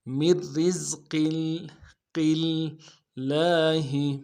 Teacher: میر رزق اگلے را کو باریک کریں گے، پہلے را کو باریک کرنا ہے ساکن والے، اور اگلے را کو باریک کریں گے، زا کے ساتھ ملانا ہے، زا کی سیٹی نکالیں گے. قوف کو موٹا کریں گے، اور قاف کو لفظ اللہ کے لام کے ساتھ ملانا ہے کیونکہ اوپر تشدید ہے.